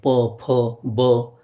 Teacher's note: प फ ब हे जी अक्षर आहे ओठ मिटल्याशिवाय म्हणताच येत नाही · ओष्ठ्य आहे, उ किंवा दीर्घ उ आहे, प फ ब. हे जी अक्षरं आहेत ही ओठ मिटल्याशिवाय म्हणताच येत नाही, उच्चारच नाही करता येत, म्हणून त्याला म्हणायचं ओष्ठ्य इत्यादी.